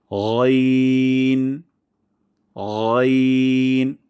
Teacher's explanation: আর গইনের উচ্চারণের স্থান হলো হলক বা কণ্ঠনালীর শেষ ভাগ থেকে মোটা সাউন্ডে উচ্চারণ করব